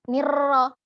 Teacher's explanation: yang harus diperhatikan saat mengucapkan ro adalah jangan terlalu banyak tikrarnya, banyak getarannya